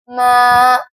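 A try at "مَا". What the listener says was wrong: मा नाक में बात नहीं जानी चाहिए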